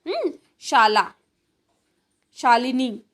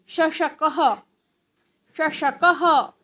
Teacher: जिह्वायाः मध्यः, जिह्वा का, हमारी जीभ का जो बीच का भाग है वो किंचित तालु को स्पर्श करता है। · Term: तालव्य